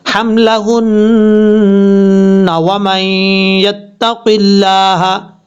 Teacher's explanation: دیکھیں لاسٹ پہ نون کے اوپر شد ہے، اور ایک یہاں پہ اگر ملا کے پڑھیں گے تو ایک الف کی مقدار یعنی غنہ کیا جائے گا